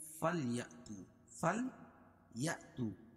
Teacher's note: یہاں حمزہ پر جھٹکا کریں گے, یا کو حمزہ میں ملائیں گے تو جھٹکے کے ساتھ